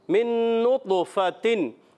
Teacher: اور نطو طا قلقلے والا ہے، حروف قلقلہ میں سے طا، اور طا ساکن ہے، قلقلہ ہوگا، آواز لوٹ کر آئے گی